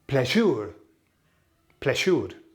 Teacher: the emphasis falls on the e sound